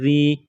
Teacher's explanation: ذال یا زیر ذی، یا ساکن سے پہلے زیر ہے، ایک الف کے برابر کھینچنا ہے، حروف مدہ یا ہے۔ ذال کو پڑھتے وقت زبان تھوڑی سی باہر نکالیں گے